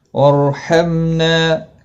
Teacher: را ساکن سے پہلے زبر ہے اس لیے پر پڑھا جائے گا